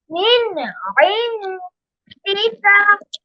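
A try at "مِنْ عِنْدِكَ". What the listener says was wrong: ইন আরেকটু গুন্না হবে, ইন এরকম। হ্যাঁ, তাহলে মিন ইনদিকা।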